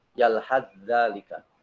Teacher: Tidak dibaca sa-nya, tapi langsung ke huruf za. Yalhaz zalika. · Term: idgham mutajanisen